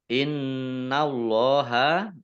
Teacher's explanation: nun tasdid dibaca gunnah atau mendengung, ditahan 2 harokat. Allahnya dibaca tebal karena harokat di depannya fathah.